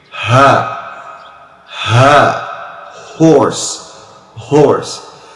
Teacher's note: However, it is not a perfect H, because H, when you say ha, horse, you make the voice to come out from the end of your throat. You make it from here. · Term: H in English